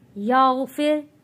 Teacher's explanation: फा रॉ ज़ेर फिर, यहाँ पे रॉ को पतला पढ़ा जाएगा क्योंकि रॉ से पहले ज़ेर आ रहा है